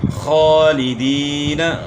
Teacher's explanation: خا کو موٹا پڑھنا ہے اور یہاں یا مدہ ہے، کھینچنا ہے